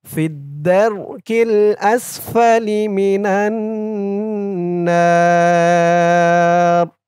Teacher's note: এই জিম চিহ্নতে অক্ফ করার কারণে না একালিফ টানটা ৩ আলিফ টান হয়ে গেছে। না বলে ৩ আলিফ টান দিয়ে এই র কে ধরবে।